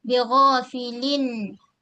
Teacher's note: gunnah dia gunnah naqisah, satu kali gunnah bunyi an. Yang nun yang ada dalam tanwin.